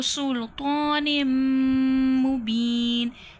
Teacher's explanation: تو حرف مستعلیہ ہے، موٹے حرفوں میں سے موٹا کر کے پڑھا جائے گا، نیم، نون میم زیر، نیم، سلطان، تنوین ہے، تنوین کی 2 زیر کے بعد نیکسٹ ورڈ کیا ہے، میم، ادغام مع الغنہ کا قاعدہ ہو رہا ہے یہاں پر، ادغام یعنی کہ 2 لفظ ملیں گے غنہ کے ساتھ، کیونکہ یہاں پر ادغام کا جو لفظ ہے، یرملون جو ہوتے ہیں، جن میں ینمو جو ہوتا ہے وہ ادغام مع الغنہ کا ہوتا ہے، ینمو، یا، نون، میم، واو۔